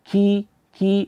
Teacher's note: huruf k di situ ada sifat namanya hams yaitu mengalirnya nafas ya Ki Ki jangan sampai nafasnya dikeluarkan secara berlebihan nanti seperti